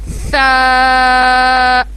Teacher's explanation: یہاں پہ ہم دیکھیں یہ ہمارے ہونٹ ہیں, اوپر والے ہمارے دانت ہیں, اس کے درمیان میں ہماری زبان کی نوک, ٹپ آف دا ٹنگ جو ہے ہمارے فرنٹ ٹیتھ کے بیچ میں آئے گی, اور پھر ہم پروناؤنس کریں گے سا.